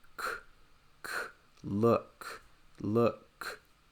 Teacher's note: This is a voiceless sound. When you make a k sound and you feel your throat, there should be no vibration.